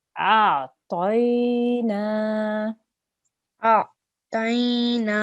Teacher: So the alif has to join with the ayn. It's not a jerking sound, it's a soft sound, but the ayn comes from the middle of the throat.